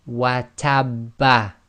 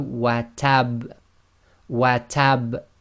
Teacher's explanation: slight echo must be audible, must be intense, but must not be converted into a fatha